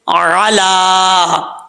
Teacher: لام کے اوپر کھڑا سٹینڈ زبر ہے تو ایک الف کی مقدار لمبا کیا جائے گا. ایک الف جو ہوتا ہے وہ 2 حرکات کے برابر ہوتا ہے. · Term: کھڑا زبر